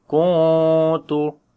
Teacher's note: We make light ikhfa here. Kuntu, like we hide the sound of noon into our nose